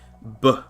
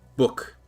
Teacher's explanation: a B is when you have your lips come together and then you go B and it makes one short sound, what's called a stop